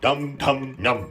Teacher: the remaining 3 cerebrals or retroflexes, that is the Mūrdhanya Vyanjana